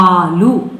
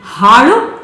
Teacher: ಳ ಅದು ರೆಟ್ರೋಫ್ಲೆಕ್ಸ್ ಮೂರ್ಧನ್ಯ ನಮ್ಮ ನಾಲಿಗೆ ಮಡಚಿ ಹಿಂಭಾಗಕ್ಕೆ ಹೋಗಿ ಳ ಅಂತ ಉಚ್ಚಾರವನ್ನ ಹೊರಡಿಸುತ್ತೆ